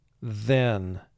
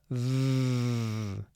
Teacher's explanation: TH is double-lined here because it's representing its second sound, the voiced sound for TH. You must vibrate your vocal cords when you're making this sound.